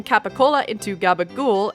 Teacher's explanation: The New Jersey Italian accent has been deleting the final vowel in certain words